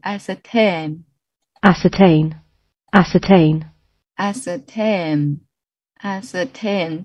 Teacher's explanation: the stress is on the 3rd syllable.